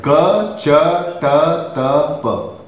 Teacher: Then the consonants are arranged based upon the place of articulation. Ka, cha, ta, ta, pa. Posterior to anterior. And if this way if you see, then they are arranged based upon voiced and voiceless.